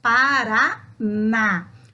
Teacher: o na é mais forte do que as outras sílabas está na última posição acentuado portanto é uma oxítona já palavras sabor tem o som